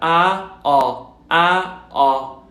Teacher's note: Es como una A, pero más redonda. A, O. Fíjense como bajo la lengua y hago la boca un poco más redonda.